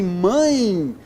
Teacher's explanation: eu tenho um ditongo decrescente nasal. Por quê? Porque a vogal é nasal. Quem manda é a vogal.